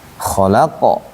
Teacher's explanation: qofnya itu huruf tebal bukan huruf tipis dia. Sehingga mantulnya mendekati harakat fathah. Fathahnya qo itu ya qo bunyinya. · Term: huruf qalqalah